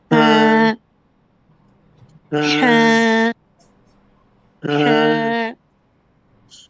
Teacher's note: ওর ভিতর থেকে ফিস ফিস ধরনের একটা আওয়াজ আসবে।